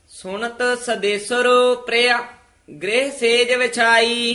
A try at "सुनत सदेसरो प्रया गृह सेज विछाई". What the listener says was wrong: ये भी विश्राम ध्यान नाल लाउणा है। सुनत सदेसरो प्रया इथे विश्राम, गृह सेज विछाई।